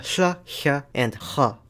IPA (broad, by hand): ç~ɕ χ